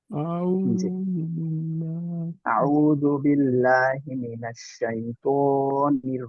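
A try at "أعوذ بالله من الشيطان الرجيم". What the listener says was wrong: এত না, এক আলিফ বাড়তি হয়ে গেল না আবার?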